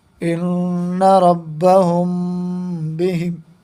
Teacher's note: یہ اخفاء شفوی ہے۔ یہ میم ساکن کے بعد با آیا ہے تو یہاں پر غنہ کر کے پڑھیں گے، یہی اخفاء شفوی ہے۔